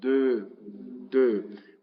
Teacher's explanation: Al inicio de palabra, el Sheva siempre se pronunciará. Se pronuncia como una E cerrada. Entonces, de.